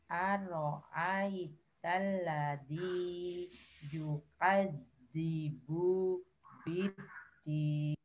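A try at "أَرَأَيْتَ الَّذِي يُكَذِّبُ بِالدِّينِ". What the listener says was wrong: Oke, lanjut. Lanjut. Betul.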